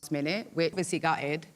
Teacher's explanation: one of the most noticeable features of accents is glottal stops. She uses them at the end of words and also between vowels.